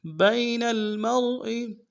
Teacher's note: با کو یا کے ساتھ ملانا ہے، یا لین بغیر کھینچے پڑیں گے